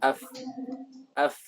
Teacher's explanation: Jadi perut bibir yang bawah dengan ujung gigi seri atas. Af wa yakhruju minhu al-fa'u faqat. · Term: huruf fa